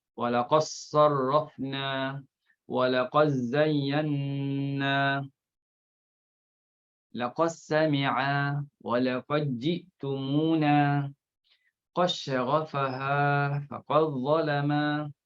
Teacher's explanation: dal bertemu dengan dad, bertemu dengan zal dha, bertemu dengan jim shin sad sin zai. Jadi idghamkan juga. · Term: idgham shaghir